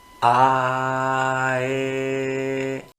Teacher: lo que estamos haciendo a la hora de pasar una a a una e es ligeramente cerrar la boca